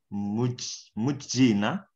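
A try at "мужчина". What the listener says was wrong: Mushina, bacanya kayak huruf sh. Mushina.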